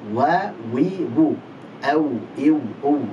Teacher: Hanya bedanya, meskipun ini sama-sama di dua bibir, bedanya adalah waw itu dia terucap dengan renggang, ya, tanpa nempel, dan dengan memonyongkannya. Wa. Jadi dua bibir, renggang, dan monyong.